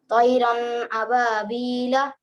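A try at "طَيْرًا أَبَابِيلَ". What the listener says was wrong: नून की आवाज को नाक में रोकने को ही गुन्ना कहते हैं। तैरन अबाबीला, नाक में नहीं रोकना है, मोटा करिए। तैरन रन, तैरन अबाबीला, इस तरह।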